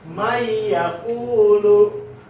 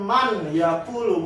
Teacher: Nah, cara bacanya itu dimasukkan dari man yang tadinya man yakulu jadi dimasukin mai. Jadi nunnya nggak dibaca, nun sukun ini nggak dibaca, jadinya mai yakulu, bukan man yakulu, bukan, tapi mai yakulu.